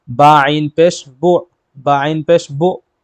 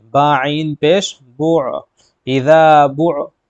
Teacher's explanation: پیش بو، با عین پیش بو، ایسے جھٹکا دیتے ہیں، تو جھٹکا نہیں دیں گے بلکہ حلق سے عین کو نکالیں گے